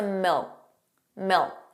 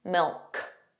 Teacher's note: So you put your tongue in the position of a K, milk, but you just don't push out that sound. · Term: final K sound